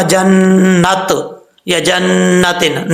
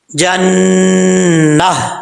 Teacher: وقف کرتے ہوئے ہا سے چینج کر دیں گے، ہا کو ساکن کر دیں گے